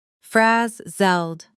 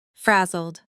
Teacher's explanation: Notice the stress falls on the first syllable and the zled at the end is quick and soft.